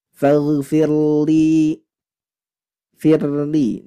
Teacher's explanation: Ingat tidak boleh dibaca tebal karena sebelumnya kasrah